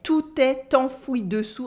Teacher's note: Here I do la liaison between tout and est.